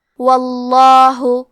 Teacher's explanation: ہمیں لفظ الجلالہ مطلب کلمت اللہ کے لام کو موٹی آواز میں پڑھنا ہے